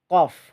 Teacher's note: pangkal lidah bertemu dengan langit-langit yang lunak